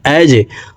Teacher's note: জিম কলকলার হরফ নিচের দিকে ধাবিত করে ধাক্কা দিয়ে উচ্চারণ করতে হবে।